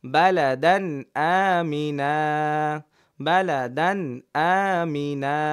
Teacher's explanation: যে দুই জবরের পরে অক্ফ করলে এক জবর বাদ দিয়ে এক আলিফ টেনে পড়তে হয় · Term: মাদ্দে এওয়াজ